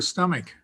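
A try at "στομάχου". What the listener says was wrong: It's got a K right there. It would be stomachos, which would be the stomach, but stomatos is just the mouth part.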